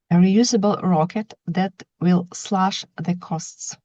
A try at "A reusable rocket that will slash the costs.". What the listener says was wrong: Yeah, you're getting clearer, I think, each time.